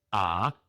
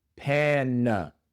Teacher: La segunda A se pronuncia con la schwa.